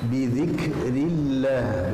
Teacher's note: Ini kafnya berdesis ya